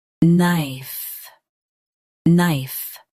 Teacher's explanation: Say nay clearly, then a soft F, knife.